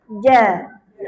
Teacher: Tengah lidah sentuh tengah langit. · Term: huruf jim